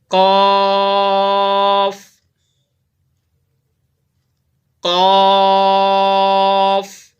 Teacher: قاف جو ہے زبان کی جڑ اور تالو کے نرم حصے سے یہ قاف ادا ہوتا ہے۔ ہر انسان کے منہ میں اوپر ایک گوشت کا لوتھڑا ہوتا ہے جو آپ کی زبان کی جڑ کو لگتا ہے، تو پھر نرمی سے یہ قاف ادا ہوتا ہے۔ · اس کی ادائیگی کے وقت ناظرین تھوڑے سے ہونٹ بھی آپ کے گولائی کی طرف جائیں گے، بالکل گول نہیں کرنا۔ اگر آپ بالکل گول کر کے پڑھیں گے نا قاف تو پھر یہ پیش اس کے اوپر لگ جائے گا، تو لہٰذا اس کے اوپر پیش نہیں ہے، मामूली से आपने अपने होंठों को गोल करना है।